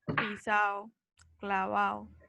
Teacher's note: este fenómeno de la pérdida de la dental oclusiva D es súper común en el llano